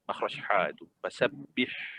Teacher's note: Bunyikan kesempitan suara ha tu. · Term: ha pedas